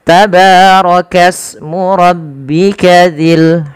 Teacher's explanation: tidak dibaca tabaraka usmu, tapi langsung ke sin karena di sini adanya hamzatul wasal yang tidak dibaca